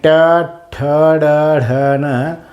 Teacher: ट, ठ, ड, ढ, न जीभ उलटी या ठिकाणी मूर्धीला लागते म्हणून मूर्धन्य म्हणायचं.